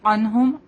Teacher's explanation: عین نون ساکن کے بعد ہا ہے، یہاں پہ تو ان کو ظاہر کریں گے. عنہم عین بولیں گے، اس کو حمزہ کی طرح نہیں بولیں گے، ٹھیک ہے.